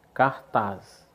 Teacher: Por que cartaz é uma palavra oxítona? Porque a sílaba tônica é o taz.